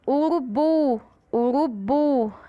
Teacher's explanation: O bu a gente fala com mais força, Com mais intensidade. Então, nesse caso, urubu é uma sílaba oxítona.